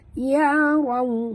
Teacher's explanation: Ya raw, ra tebal, waw sifatnya lin, muncungkan mulut.